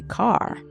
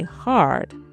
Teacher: Linguistics call this rhotic speech, accents that pronounce the R sound in every position